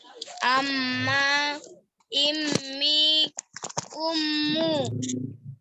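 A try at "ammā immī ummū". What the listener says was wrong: Yang maksud saya yang ditekan itu di mimnya ya. Amma, immi, ummu. Ingat mim kalau ada tasdid itu nanti setelah kita tilawah Quran ketemu mim ada tasdid atau nun ada tasdid itu pasti ditahan 2 harokat ya kayak tadi itu, ingetin aja itu.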